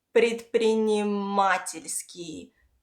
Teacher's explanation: the stress falls on a, частно, and предпринимательский, the stress falls on a, предпринимательский, частно-предпринимательский, частно-предпринимательский.